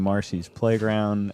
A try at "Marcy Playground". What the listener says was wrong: it's Marcy Playground. not Marcy's Playground.